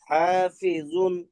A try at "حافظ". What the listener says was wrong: না না, হাফিজ, এটা কিন্তু সুকুন, এটা আপনার পেশ না।